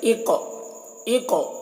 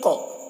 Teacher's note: क़ाफ में आवाज़ में जुम्बिश पैदा हो रही है, क़ाफ में आवाज़ टकरा रही है, डबल निकल रही है क़ाफ की आवाज़ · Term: कलकला